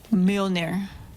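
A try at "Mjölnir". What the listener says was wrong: Almost. You're still saying mule, Mjolnir.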